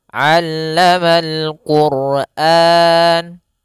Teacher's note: pada huruf ain jangan sampai dibaca allamal Qur'an, jangan pakai alif, jangan pakai hamzah